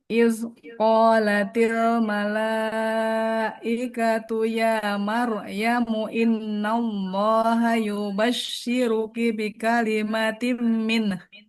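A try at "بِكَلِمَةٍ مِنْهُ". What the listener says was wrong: Bi kalimatim min. Jadi tidak minah. tidak minah ya. Nunnya mengalir dulu. Min.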